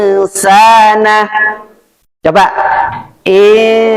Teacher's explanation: dengungnya itu tiga tiga harakat tiga ketukan · Jadi dengungnya samar masuknya ke sin. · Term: Ikhfa hakiki